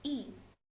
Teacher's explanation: Hai bunyi keempat pada kata febbit merupakan bunyi i i merupakan bunyi vokal tinggi-rendah lidah tinggi atas gerak lidah bagian depan struktur tertutup bentuk bibir tak bulat